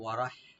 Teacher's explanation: রা একটু ডিপ করে পড়তে হবে, আর হা একটু আমরা হামস করবো